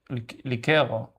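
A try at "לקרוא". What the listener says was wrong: Without the e. If the dots are like this, you finish a syllable. If they are like this, the e. Likro.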